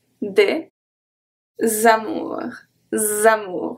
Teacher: the S is going to be transferred to amour and it makes a Z sound